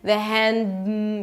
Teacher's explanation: The D is a held D. You don't release it. The hand. You move on to the M.